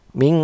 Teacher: samar dan berdengung namun suara samarnya lebih besar daripada suara dengungnya jadi kayak ujung lidah ini ada di belakang gigi seri atas dan terbaca seperti Ming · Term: ikhfa